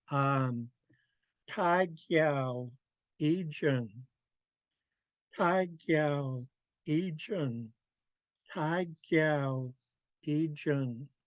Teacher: So the first part is high tone, Tai. Second part is low tone, Giao. And then we're high tone and low tone, Ijun.